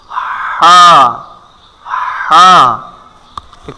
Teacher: মধ্যখান ঠিক তার উপরে লাগাইতে হবে জিম তারপরে কি আছে হা কণ্ঠনালীর ঠিক মধ্যখান থেকে হা উচ্চারণ হয়